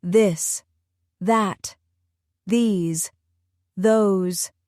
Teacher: In this the sound is voiced. You use the same tongue position but add vibration in your throat.